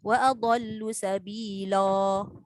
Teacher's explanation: Jangan terlebih pula jadi macam imalah.